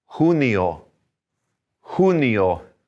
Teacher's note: let's breathe that J a little bit, almost like an H